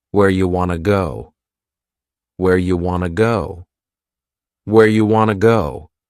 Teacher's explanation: You becomes ya and want to becomes wanna. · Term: reduction